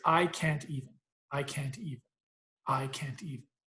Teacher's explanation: can't is the loudest most stressed word just naturally speaking